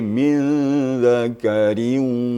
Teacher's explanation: Jadi sengaunya al-khayshumnya harus kedengaran. Okay. Bukan hanya sekadar tasydid, tapi harus kedengaran al-khayshumnya. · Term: idgham bigunnah